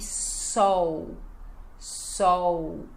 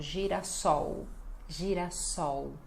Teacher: L final, som de U